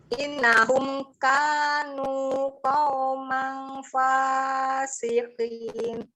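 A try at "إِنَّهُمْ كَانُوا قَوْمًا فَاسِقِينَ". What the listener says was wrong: Bagus sih, cuman nun tasdidnya aja kurang dengung. Harus innahum.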